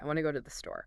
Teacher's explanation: my mouth does not stop making sound between want and to or go and to. I'm just making one long varying noise.